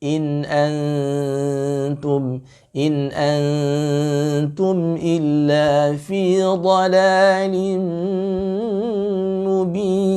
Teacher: In lagi-lagi ditipiskan karena huruf ta istifal. Ya, maka tidak ada tafkhim gunah di situ. Ya, gunahnya tetap ada tapi tarqiq ya, tidak boleh ditafkhimkan gunahnya.